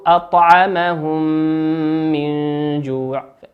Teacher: الميم في قوله أطعمهم هي ميم ساكنة، والميم التي في قوله من هي ميم متحركة فتدغم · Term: الإدغام الشفوي